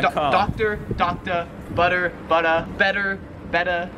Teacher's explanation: now these last three all kind of have to do with how australians pronounce the r sound at the end of a word so they just don't really pronounce it · the r is not really pronounced